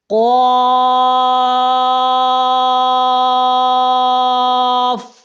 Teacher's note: یہ پر کرنا ہے اور 5 الف لمبا کرنا ہے